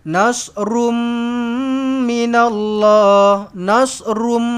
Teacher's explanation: Ini sepatutnya dengung idgham maal ghunnah.